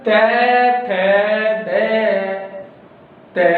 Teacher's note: तुसी उच्चारण करके देखोगे थोड़ी जिहड़ी जीभ हैगी है वो दंदां नाल लगदी हैगी है